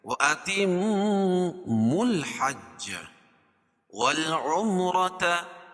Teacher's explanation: را کے اوپر زبر ہے تو را کو پور پڑھیں گے